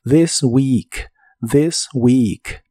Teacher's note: la th de This se pronuncia como una d vibrante y la doble e de weak se pronuncia como una I larga o doble